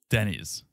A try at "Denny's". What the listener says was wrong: I'm not gonna rain on your parade because it's way more fun to say Denise. You're saying it like a woman's first name, Denise. Like Denise Richards. It's a man's first name, Denny.